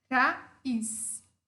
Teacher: uma vogal aberta e uma fechada tônica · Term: hiato